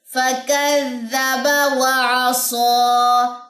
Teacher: عین کو گلے کے درمیان سے نکالیے